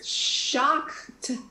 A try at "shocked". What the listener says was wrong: You made that word three syllables.